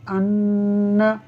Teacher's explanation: اگر نون مشدد ہو تو اس میں غنہ ہوتا ہے، تو ایک الف کے برابر ہم ناک میں آواز کو لے جا کر پڑھیں گے